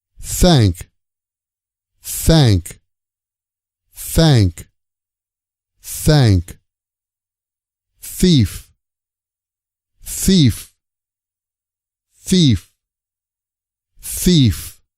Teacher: in this lecture we're going to practice the unvoiced th sound to make the unvoiced th sound the tip of your tongue should come between your front teeth just a little bit · tongue should come between your front teeth just a little bit this sound is unvoiced so don't use your vocal cords to make this sound